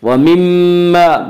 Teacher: میم مشدد ہے، غنہ ہوگا، اور الف مدہ ہے یہاں پہ، الف ہمیشہ مدہ ہوتا ہے اور اس سے پہلے زبر ہوتا ہے، اس لیے الف مدہ کو ایک الف کے برابر کھینچ کر پڑھیں گے۔